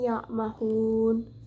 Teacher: terdapat huruf mad tabi'i jatuh sebelum huruf yang diwakafkan, dibaca panjang sebanyak 2-6 harokat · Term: mad arid disukun